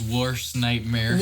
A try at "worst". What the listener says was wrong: The hell was that pronunciation? Like bratwurst.